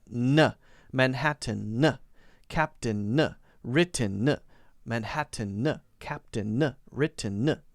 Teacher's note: If you just practice that n, front is blocked. The front of your tongue is blocking, so the air is coming out of your nose, not the back. If you practice releasing it, then you can get the feeling for it. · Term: N sound